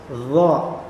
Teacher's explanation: di belakang lidah bagian belakang itu seperti ada tekanan untuk ke atas